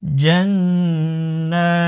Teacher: নুনের উপর তাশদীদ গুন্নাহ করা আবশ্যক